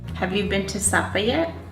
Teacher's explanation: Americans tend to have a steady rise.